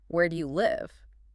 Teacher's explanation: And for a question, where do you live? The pitch drops at the end there too. It feels like it signals authority or certainty. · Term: staircase